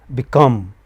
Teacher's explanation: Become, the final syllable is stressed.